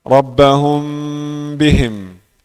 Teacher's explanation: hukum yang ketiga ikhfa syafawi. Mim bertemu ba